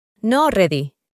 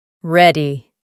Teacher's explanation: Pronuncian la R con la lengua en el paladar